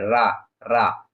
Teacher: रा बोलेंगे तो क्या होता है जीभ कंपित होती है तो इसी को बोलते हैं प्राकंपित वर्ण प्राकंपित या लुंठित व्यंजन लुंठित यानी पीछे की ओर लुड़क जाती है।